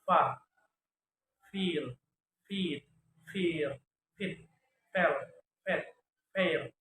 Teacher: Voiceless labiodental fricative sound fa, feel, feed, fear, fit, fell, fed, fair, food, full, food.